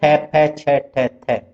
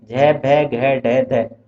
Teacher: जो वर्णों के उच्चारण में प्राणवायु का अधिक प्रयोग किया जाता है वो महाप्राण कहलाता है